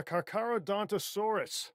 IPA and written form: ˌkɑːrkəroʊˌdɒntoʊˈsɔːrəs (Carcharodontosaurus)